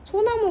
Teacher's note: 수 있습니다 예를 들면 소나무 같은 단어는 솔과 나무가 합쳐진 단어거든요 근데 솔 받침에 있던 ㄹ이 탈락을 했죠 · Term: 자음 탈락